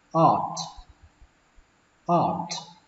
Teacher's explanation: Âm A ở đây các bạn hơi kéo dài nó ra một chút.